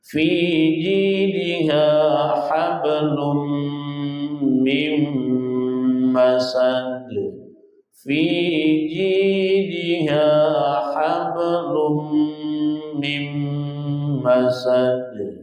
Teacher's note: Fi dua harakat mad tabi'i, ji dua harakat mad tabi'i, diha dua harakat.